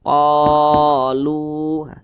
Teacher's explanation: Mad tabi'i panjangnya 2 harokat atau kira-kira 2 ketukan. Qalu, lu dibaca panjang.